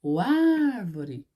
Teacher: Olha só, a gente demora mais na primeira sílaba.